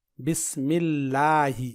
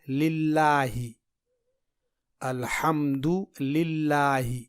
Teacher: لفظ اللہ سے پہلے زیر یعنی کسرہ آئے تو لفظ اللہ کے لام کو باریک پڑھیں گے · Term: باریک لام